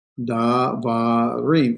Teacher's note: we've moved the emphasis to the end, we've lengthened that, and we're therefore going to de-emphasize our pronunciation in the beginning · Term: propretonic reduction